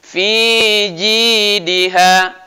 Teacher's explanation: Jangan lama di fi-nya, hanya 2 harokat.